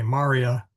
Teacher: So you say Maria, not Maria. The accent is on the first MA, whereas in the Blessed Mother's name, it is on the I.